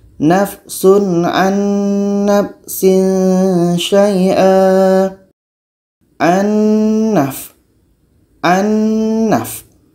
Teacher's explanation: Kita harus bacanya secara idgham kamil, harus masuk secara sempurna. Bunyi nun masuk kepada bunyi nun yang kedua.